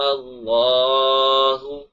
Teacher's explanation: اللہ لام کو موٹا بھی پڑھیں گے اور 1 الف کے برابر کھینچ کر بھی پڑھیں گے